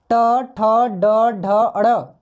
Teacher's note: ये सब हम लोग मूर्धा से यानी कि मुंह से बोलते हैं।